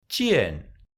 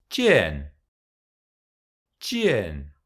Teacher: It is pronounced like Z, z, but with the dorsum of the tongue. It is exactly like X.